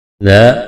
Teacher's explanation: الف مدہ ہے، الف سے پہلے زبر ہے، ایک الف کے برابر کھینچنا ہے۔